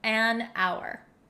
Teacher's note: We totally get rid of the H sound. And that's why we say an hour.